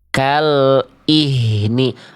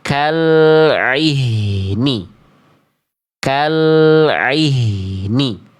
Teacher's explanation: Tidak jadi hamzah, tapi juga ainnya tidak sengau.